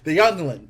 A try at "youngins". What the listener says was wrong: The youngins? No L.